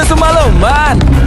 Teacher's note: dari kata semalaman itu merupakan suatu perubahan fonem A menjadi E